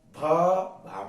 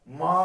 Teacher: ये कौन से व्यंजन है, ओष्ठ व्यंजन है, क्योंकि इनके उच्चारण में होठों का यूज हो रहा है।